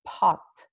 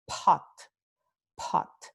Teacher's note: cuando este fonema P ocurre al principio de la palabra o al principio de la sílaba en inglés, tenemos esta pequeña aspiración